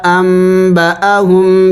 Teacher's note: ساکن کے بعد با آیا ہوا ہے تو اس نون کو میم سے بدلیں گے